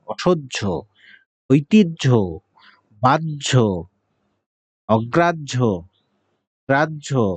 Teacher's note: হয়ের সাথে জ ফলা থাকলে এটার উচ্চারণ হবে জ এবং ঝ একত্রিত হলে যা হয়